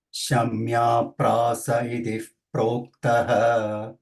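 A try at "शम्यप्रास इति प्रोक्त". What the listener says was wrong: Itif, no. There is no Visarga after iti. It is Dvitva. Iti Prokta. No Visarga after iti. Iti is a avyaya.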